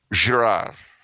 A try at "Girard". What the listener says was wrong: And then the final D is silent.